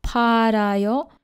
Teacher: But here ryul is pronounced as r, parayo, because this syllable produces a vowel sound, a. And when ryul is placed between vowel sounds, it's pronounced as r